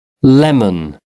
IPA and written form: ˈlɛmən (lemon)